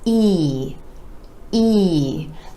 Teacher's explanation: The sides of the lips retract just a bit for this sound, and you want to give it more stretch, more duration, and a little more energy. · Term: E vowel sound